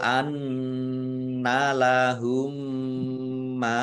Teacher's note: Lau anna lahumma nun tasdid bacaan ghunah dibaca mendengung ditahan biar tampak dengungannya. Mim sukun bertemu dengan huruf mim. Idgham mutamasilain atau idgham mimi dibaca mendengung. Mim ditandai mimnya ada tasdidnya.